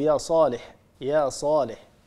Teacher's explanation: يا هذا مد طبيعي، يا صالح هذا أيضا مد طبيعي، هذا المقدار هو مقدار الحركتين